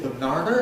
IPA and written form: bəˈnɑːnɚ (banana)